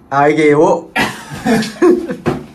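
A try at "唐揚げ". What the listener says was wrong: 가라아게 아게 아니야 가라아게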